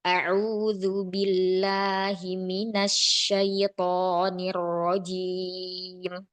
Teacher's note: Huruf lam harus dibuat tipis lagi. Turunkan pangkal lidah, rilekskan agar bunyi lam tidak naik. · di huruf lamnya mau tipis lagi, pangkal lidahnya diturunkan, rohah istirahat, sehingga suara lamnya tidak naik.